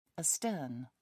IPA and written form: əˈstɜːn (astern)